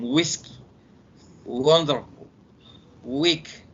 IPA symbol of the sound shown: w